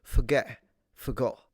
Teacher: you are ever so slightly beginning the pronunciation and then ending it in what is usually technically called a glottal stop